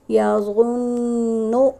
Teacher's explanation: یہاں نون مشدد ہے تو یہاں غنہ کریں گے